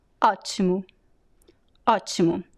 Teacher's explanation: most of the time this O sounds like a very weak U. · I would say that 90% of the time people would pronounce like U, the last O in a weak syllable.